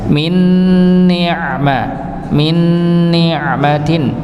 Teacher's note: di sini ada nun sukun bertemu dengan nun, maka dibaca idgham. Nggih, idgham bi gunnah. Maka ditahan, didengungkan, ditahan juga